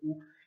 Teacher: 혀는 점점 약간 이렇게 뒷부분으로 위로 올라갑니다.